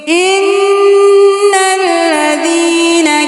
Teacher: نون کے اوپر شد ہے تو یہاں پہ ہم غنہ کریں گے